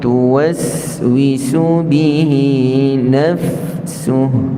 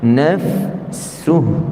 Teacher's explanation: Dan selain safir, bagi orang yang belajar sifat huruf, adalah adanya sifat rakhawah pada sin. Ini kena beri tempoh dulu sebelum kita nak pindah kepada waw selepas dia.